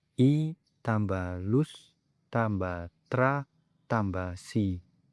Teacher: Kemudian didapati bahwa yang benar ialah I tambah lus tambah tra tambah si. Karena bunyi S yang berada di tengah kata tersebut memiliki porsi pelafalan yang lebih besar pada suku kata sebelumnya daripada suku kata setelahnya